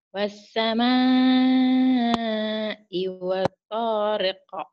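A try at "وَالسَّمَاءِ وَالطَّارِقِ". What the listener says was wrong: Kurang nyamber, makanya tadi ya. Nah, makanya disuruh nyamber di situ. Wassamai wattariq. Gitu.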